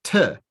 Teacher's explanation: You would say tuh. The little uh after the t is that's the shva.